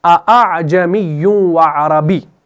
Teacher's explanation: پہلا حمزہ ہے نا وہ آپ کو تحقیق سے ادا کرنا ہوتا ہے، اور دوسرا حمزہ آپ کو ذرا نرم کر کے پڑھنا ہوتا ہے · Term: تسہیل